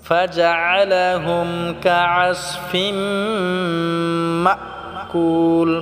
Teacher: ফাজআলাহুম কাআসফিমটা গুন্না করব। তানবিনের পরে মিম এসেছে এখানে, এটা আমরা গুন্না করব, ইদগাম হয়েছে।